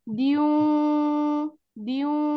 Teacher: bibirnya sudah monyong, lalu udaranya terbagi antara hidung dan mulut 50%, bibir mulut 50%, hidung 50%.